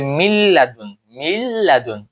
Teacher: এই নন সাকিন পরে যাবে আর মিমের সাথে লামটা মিলে যাবে